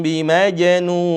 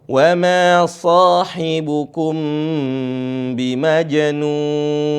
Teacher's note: di situ ada mim bertemu dengan ba ditahan sedikit saja dua harakat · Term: Ikhfa Syafawi